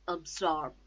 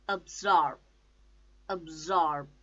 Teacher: the stress is on second syllable